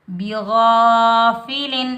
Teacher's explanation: لام پر ہم نہ غنہ کریں گے نہ اخفا کریں گے. لام کی آواز کو ہم ظاہر کریں گے. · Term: اظہار